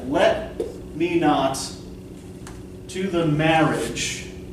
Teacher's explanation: So to the, these are unstressed.